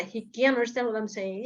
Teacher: Jadi kuncinya ada di penekanan, can't-nya ditekankan, understand-nya nggak sambil lalu aja untuk verb-nya.